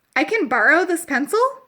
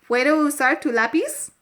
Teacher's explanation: In English, you might say, "Can I use your pencil?" or "May I use your pencil?" But in Spanish, you just say the statement sentence, and you use an inflection up at the end of that to signify to your listeners that it is a question